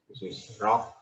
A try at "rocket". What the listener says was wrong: But you don't have to separate it, right? I can understand rocket. So it has to be very smooth, connected rocket. But you have to just remember that this syllable will be highlighted.